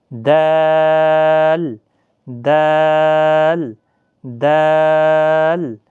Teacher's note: زبان کی نوک اور ثنائے علیہ کی جڑ سے ادا ہوتا ہے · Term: حروف نطعیہ